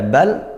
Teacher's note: lam sukun Kemudian bertemu lam juga maka ini hukumnya idgham mutamilain langsung masuk